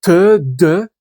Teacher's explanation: c'est des mots qui se prononcent avec les dents, la langue entre les dents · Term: dentale